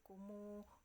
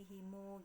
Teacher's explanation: tiga imam ini bersepakat untuk membaca mim jama dua harokat atau yang namanya silah